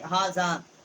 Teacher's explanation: ہا کے اوپر کھڑا زبر ہے، ایک الف جتنا یہاں ہم نے آواز بلند کی ہے. زا الف زبر مد زا، چھوٹی مد ہے.